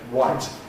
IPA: waɪt